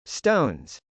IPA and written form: stˈoʊnz (stones)